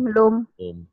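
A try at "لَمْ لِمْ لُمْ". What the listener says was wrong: lam lim lum. Jangan lang ling lung ya. Lam lim lum.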